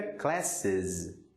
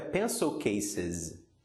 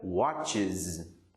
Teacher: O S ou ES tem som de IZ quando a palavra termina com um som sibilante, ou seja, quando ela termina, por exemplo, com os sons de S ou de TS.